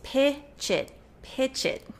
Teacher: So instead of we need to pitch it, you're not going to finish that air at the end of pitch. You're going to connect the ch to the I, chit. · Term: linking